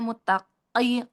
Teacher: Nah, kofnya hati-hati ya. Jadi kofnya tidak terlalu ke belakang sekali ya, muttaqi. ya.